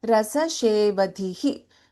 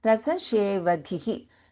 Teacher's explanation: We do not prolong this swara in the last letter here because it's a hasva, short vowel.